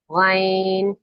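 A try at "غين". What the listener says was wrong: गॉइन कैसा लेटर है, मोटा है पतला है। हाँ तो उसको गईन गईन नहीं कहें, गॉइन मोटा करें उसको, गॉइन। और आपके हलक से कहाँ से आवाज निकलनी चाहिए, अदनाउल हलक से आवाज निकलनी चाहिए,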